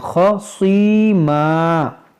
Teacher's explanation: یہ خوا موٹا کریں گے، صاد موٹا کریں گے